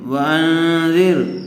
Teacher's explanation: واو زبر و، حمزہ نون زبر ان، وان نون ساکن کے بعد حروف اخفاء میں سے ذال آئی ہوئی ہے، اس لیے غنّے کے ساتھ اخفاء کر کے پڑھیں گے